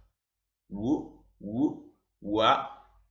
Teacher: It's a little bit voyelle sound and a little bit consonant sound. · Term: semi-consonant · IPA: [w]